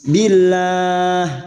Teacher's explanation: lam jalalah yang didahului kasroh, kita baca tarkik tipis. Billah, dan kita membaca waqaf, maka 4 harokat kita panjangkan.